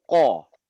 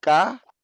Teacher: Lidah bagian belakang terangkat. Ko. Pada saat kita sebut ka, lebih ringan dan lidah cenderung turun atau mendatar.